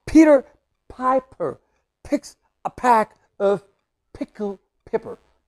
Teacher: It sounds like puffing sound. It's a puffing sound. Means the flow of the air just go through your lips, no? By pressing.